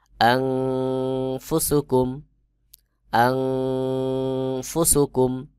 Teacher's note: নুন সাকিন এরপরে ফা ইকফার হরফ, এখানে ইকফা গুন্না হবে, অর্থাৎ আন এইটা নাকের ভিতর লুকায়ে পড়তে হবে।